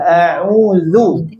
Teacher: ketika di dhammah ain pas monyong, kamu tarik dulu sedikit. Kemudian ucapkan dzal. A'udzu. Nah, biar tipis. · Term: ain dhammah monyong